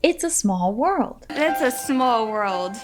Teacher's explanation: Listen for how we emphasize the words small world.